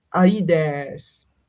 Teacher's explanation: So often in Homeric poems and early archaic poetry, and sometimes in later poetry trying to imitate the archaic poetry, we read Aides. So no aspiration, and we clearly see the diphthong, A, like the alpha and the iota